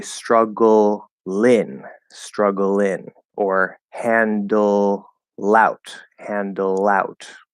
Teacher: you can activate the L as a consonant and move it over